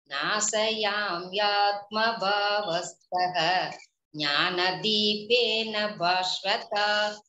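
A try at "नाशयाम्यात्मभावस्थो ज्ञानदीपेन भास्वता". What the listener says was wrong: It is sha, shankara sha, nasaya, nasanu. It is not Saraswati, sir. Then Bhaswata.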